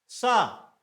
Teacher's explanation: इसका घर्षण स्थान है तालू यह तालू से टकराएगा इसीलिए इसको उच्चारण स्थान में तालव्य भी कहा जाता है